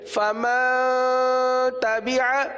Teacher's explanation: نون ساکن کے بعد تا حروف اخفا میں سے ہے، اس لیے یہاں پر اخفا کا قاعدہ ہوگا، لہٰذا اخفا یعنی غنہ کریں گے۔ غنہ کی مقدار 1 الف کے برابر ہے